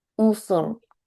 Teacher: Huruf sinnya kan mengalir dulu ya suaranya. Baru masuk ke huruf roknya. Tebal.